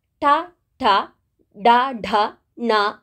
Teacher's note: ಠ ಠ ಡ ಢ ಣ ಅಂತ ಹೇಳುವಾಗ ನಮ್ಮ ನಾಲಿಗೆ ಮೇಲ್ಭಾಗಕ್ಕೆ ತಾಗ್ತದೆ, ಬಾಯಿಯ ಮೇಲ್ಭಾಗಕ್ಕೆ ತಾಗಿದಾಗ ಮಾತ್ರ ಈ ಶಬ್ದಗಳನ್ನು ನಾವು ಉಚ್ಚಾರ ಮಾಡಲಿಕ್ಕೆ ಆಗುವಂಥದ್ದು. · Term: ಮೂರ್ಧನ್ಯಗಳು